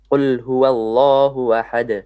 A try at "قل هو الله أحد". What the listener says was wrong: You stretch the ha again. Don't stretch the ha.